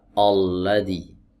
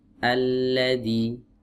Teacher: Alladzi bukan o tapi a ya tipis